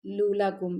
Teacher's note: لمبا نہیں کرنا لام کو، آپ کوشش یہ کریں کہ دوسری لام فوراً پڑھیں، لُولَكُمْ ایسے پڑھا جائے گا.